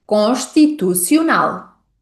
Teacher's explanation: Tal como disse há pouco, a letra S, quando antecede a letra T, é pronunciada como x. Então, nesta palavra, voltamos a encontrar o som x associado à letra S.